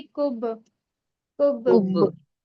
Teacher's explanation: जी कलकला होगा यहाँ पर, हुरूफे कलकला के पहले हुरूफों कलकला में बा आ रहा है जज़म के साथ, बा पर जज़म है, इसलिए यहाँ पर कलकला होगा, दोहरी आवाज आएगी।